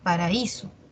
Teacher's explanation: Está la A y la I, son de diferente timbre. La A es abierta, la I cerrada, y la mayor fuerza de voz está en la cerrada.